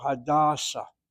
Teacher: with the name, the proper name of a person, you hit the first syllable